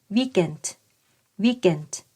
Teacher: แต่เวลาพูดเร็วๆเสียงของตัวสะกดกาหรือกไก่เนี่ยก็จะลิงกับพยางค์หลังนะคะ